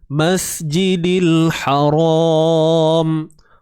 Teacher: Masjidil kemudian ni mim baris atas sikit lagi tuan-tuan, habis dah. Mas, matikan sin ni, hujung lidah tak payah keluar, biasa je duduk dalam.